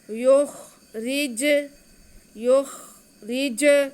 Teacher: جیم حروف قلقلہ بھی ہے، جیم کے بعد کو ہم باتیں بھی کریں گے، جنبش بھی دیں گے. را کو باریک پڑھیں گے کیونکہ را کے نیچے دیر ہے